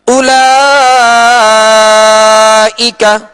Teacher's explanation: اب اولا لام کے اوپر کھڑا زبر ہے، یہ کھڑا زبر الف مدہ کے قائم مقام ہے، اور اس الف مدہ کے بعد حمزہ اسی کلمہ میں ہے، لہذا مد متصل ہوگا اور اس کو ہم کھینچ کر پڑھیں گے